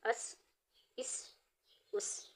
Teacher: سین حروف صفیریہ میں سے ہے، اس کی ادائیگی میں ہلکی سی سیٹی کی آواز آئے گی